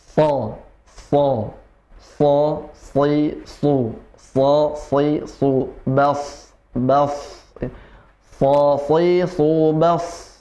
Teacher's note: ujung lidah bertemu dengan gigi seri bawah ya, ujung gigi seri bawah, tapi nafasnya keluar dari ujung gigi seri atas. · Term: huruf sa